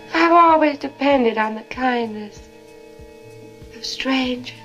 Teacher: You hear how there's no R in strangers? Strange. That's a non-rhotic accent.